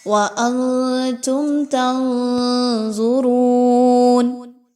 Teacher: میم ساکن کے بعد تا کا حرف ہے تو اس لیے یہاں پر اظہار شفوی ہوگا، کسی طرح کا غنہ نہیں کرنا۔